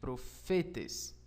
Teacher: profetas tem suas sílaba tônica na penúltima sílaba